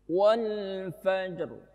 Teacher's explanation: ro di situ jangan hilang, namanya waqaf raum